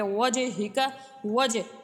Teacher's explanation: جیم ساکن اور جیم حروف قلقلہ ہے، قلقلہ حروف جب ساکن ان میں قلقلہ خوب ظاہر ہوتا ہے، اس لیے یہاں پہ وجہک، وجہ اس طرح سے ہم نے اسے ادا کرنا ہے۔